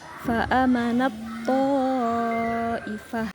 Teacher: ta-nya dimasukkan langsung ke to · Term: idgham mutajanisain